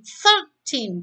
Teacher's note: Dua silabel. Silabel depan itu dibaca lemah. Yang ditekankan adalah silabel yang belakang.